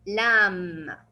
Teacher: you will not pronounce the B and it will be silent. And we will stop only on the M. It will be lamb.